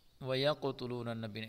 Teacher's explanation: اس قاف کو پر پڑھیں گے اور پر کے ساتھ ساتھ اس میں قلقلہ بھی کریں گے